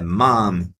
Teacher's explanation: No mom, você vai abrir um pouquinho essa vogal.